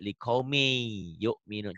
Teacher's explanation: melebur. Bunyi N-nya, bunyi tanwinnya berubah menjadi Y.